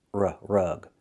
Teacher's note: Use the short uh sound like cup and up. R-rug, not rag, but rug.